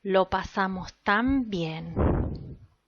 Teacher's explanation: what you are producing is a bilabial nasal in this context why because of the influence of the the bilabial sound in